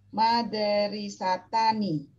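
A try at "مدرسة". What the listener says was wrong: Madaro ya. Kalau madari enggak ada, adanya madaro. Madarosatani. Aywa, madarosatani ya. Madarosatani.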